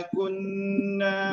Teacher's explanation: Hukumnya kunna hukumnya idgham wajib guna berdengung secara dua harakat